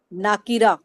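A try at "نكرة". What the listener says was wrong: نا کو لمبا نہیں کرنا. نکیرہ، ہا کی ساؤنڈ بھی آئے آخر میں.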